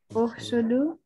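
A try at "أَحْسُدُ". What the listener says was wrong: So, sister, it is Uhsud. You know, the last word is silent here. Uhsud.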